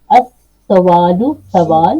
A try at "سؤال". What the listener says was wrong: سؤال عربی میں کہتے ہیں سؤال, اور اردو میں کہتے ہیں سوال. تھوڑی سی شیپ, حروف وہی ہیں, جسٹ پروننسیشن کے اندر تھوڑا سا فرق ہے. ہم سؤال کو سوال کر دیتے ہیں.